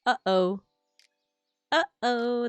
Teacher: it's like your throat closes up before you complete the sound